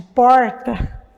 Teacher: esse R que a gente chama de R retroflexo que é o r de porta né é por exemplo um traço do português falado que caracteriza